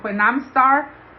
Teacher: Her phrase when I'm star instead of when I started suggests influence from Spanish pronunciation patterns where final consonant clusters are rare.